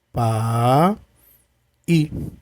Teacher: Então, pai é uma vogal e aqui o i é uma semivogal. Começo de uma vogal, caio para uma semivogal, decrescente.